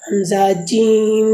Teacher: پانچواں مخرج ہے جیم کے بارے میں۔ زبان کا بیچ یعنی زبان کا درمیان جب تالو کے درمیان سے لگے گا تو اس سے جیم ادا ہوگی